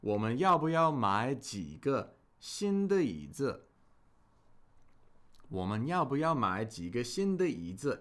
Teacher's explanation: And if we're speaking this sentence at a normal speaking pace, because we have two third tones here that are related, the first one of the pair would probably be pronounced with a second tone